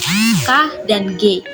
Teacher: dorsovelar dapat dihasilkan dengan cara menggerakkan pangkal lidah dengan menyentuh langit-langit lunak